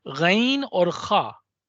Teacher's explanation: यह हलक का जो अगला हिस्सा है उसमें से आवाज निकलती है